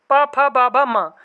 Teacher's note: अब इसके अंतर्गत पा, फा, बा, भा, मा, ये अक्षर आते हैं और ये होंठों का स्पर्श करते हैं। क्या करते हैं, होंठों को स्पर्श करते हैं और इसीलिए इन्हें कहा जाता है ओष्ठ व्यंजन। क्या कहा जाता है, ओष्ठ व्यंजन।